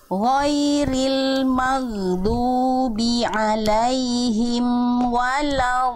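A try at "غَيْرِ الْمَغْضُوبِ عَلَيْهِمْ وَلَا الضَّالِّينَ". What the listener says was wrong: Nah, yang ini kalau tadi Bunda rasanya berat gitu ya. Jadi sebenarnya tinggal tinggal disentuhkan, dialirkan walau gitu ya sebenarnya.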